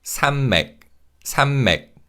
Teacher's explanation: Now, when we say this word in natural speed, because of nasalization, 니은 받침 in 산 changes to a 미음 sound